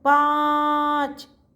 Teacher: Open mouth जा रहा है और नाक में जा रही है साउंड। नोज ही पकड़ो। · नाक से साउंड जा रही है। ओपन माउथ हो रहा है। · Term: अनुस्वार